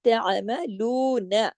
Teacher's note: نا کو زیادہ نہیں کھینچنا ایک حرکت نون زبر نا · تعملون سارے حرف ایک ایک حرکت صرف لو جو ہے یہ دو حرکات کھینچے گا کیونکہ اس کے ساتھ واو مدہ ہے تعملون بس نا کو زیادہ نہیں کھینچنا ایک حرکت نون زبر